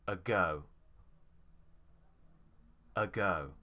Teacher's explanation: the stress is on go